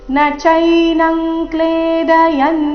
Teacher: ಅನುಸ್ವಾರದ ಉಚ್ಚಾರಣೆ ಕ ವರ್ಗದ ಅನುನಾಸಿಕದ ರೀತಿ